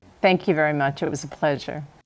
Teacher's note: the CH in much links to it to sound like chit